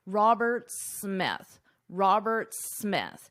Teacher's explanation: his name ends in an S Roberts but the second part of his last name starts in an S so in this case you only pronounce One S